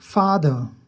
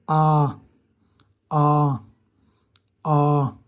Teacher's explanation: इसमें थोड़े बहुत होंठ जो है ना गोल हो जाते हैं